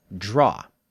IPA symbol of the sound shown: dʒ